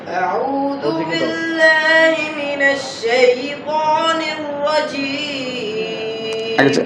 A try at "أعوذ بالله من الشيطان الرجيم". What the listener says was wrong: আগে একটু মুখ খুলেছেন জিহ্বা বের হয়ে যাচ্ছে আরো মুখ খুলেন আরো সুন্দর হবে আরো জবান খুলতে পারলে আরো সুন্দর হবে কি আগের চেয়ে সুন্দর হয়নি কথা বলেন বলেন